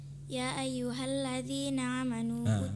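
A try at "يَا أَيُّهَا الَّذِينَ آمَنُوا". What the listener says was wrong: Bukan amanu, A-nya panjang. Ya ayyuhalladzina amanu ya.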